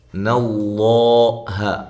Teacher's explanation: لفظ اللہ کو موٹا کرنا ہے کیونکہ اس سے پہلے زبر ہے